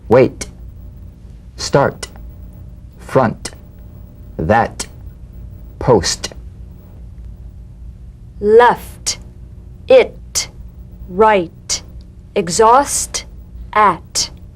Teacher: unvoiced t tongue front palatal stop consonant cognate to the d the same staccato springing action as the d drum beat with no voice forms the light tap of the t · the unvoiced t tongue front palatal stop consonant cognate to the d